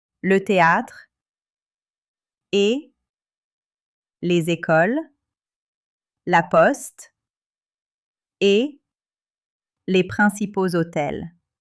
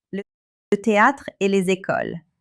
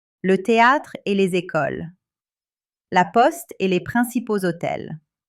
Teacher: In spoken French, the final consonant links with the next word that begins with a vowel. Et les. You hear a small L sound between et and les. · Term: liaisons